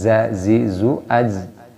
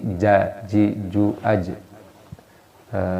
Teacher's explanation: Nah ini jim, tempat keluarnya yaitu lidah bagian tengah.